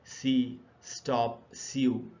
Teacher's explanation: पहला है एस, और एस एक अनवॉइस्ड कॉन्सोनेंट है